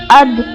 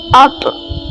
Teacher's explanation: تا، دال اور طا کو حروف نطعیہ کہتے ہیں۔ جب زبان کی نوک اوپر کے سامنے والے دو دانتوں کی جڑوں سے ٹکراتی ہے تو یہ ادا ہوتے ہیں